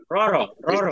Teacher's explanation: একটা ভাইব্রেশন একটা ভাইব্রেট করবে এখানে ঠিক আছে একটা নাড়াচাড়া করবে একটা কম্পন তৈরি হবে মুখের মধ্যে র র র র জিহ্বাটার জিহ্বাটা হ্যাঁ কম্পন হবে র র